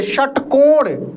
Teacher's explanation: मूर्धन्य श का उच्चारण मूर्धा से